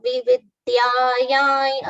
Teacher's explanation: Anuswara on ya has been pronounced as nya.